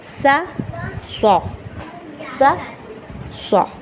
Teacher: یا پھر ہم جیسے سین کو پڑھتے ہیں، سین کو ہم اگر موٹا کر دیں تو بن جائے گا ہمارا، ہم سین کو پڑھ لیں سا، سین کو موٹا کر دیں گے تو بن جائے گا سو